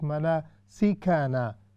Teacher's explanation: we do not stretch manasikana, because there is only fatha kasra and dhamma